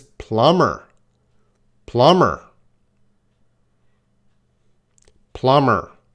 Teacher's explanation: There is no B sound.